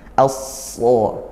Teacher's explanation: huruf shad ini tebal, maka kita naikkan pangkal lidahnya dan juga itbaq sampai tertutup rongga mulutnya.